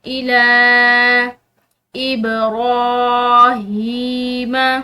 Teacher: با حروف قلقلہ میں سے، ٹھیک ہے، تو یہاں پر اس کو ہلاتے ہوئے یعنی کہ قلقلہ کرتے ہوئے پڑھیں گے۔ · لام کے اوپر کھڑی زبر بھی ہے اور ساتھ میں یہ چھوٹی مد بھی، تو اس لام کو کھینچتے ہوئے لمبا پڑھیں گے